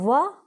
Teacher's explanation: वकारस्य दंतोष्ठम, वकारस्य मतलब व जो दंतोष्ठ होता है, दांत और होठ के द्वारा बोले जाते हैं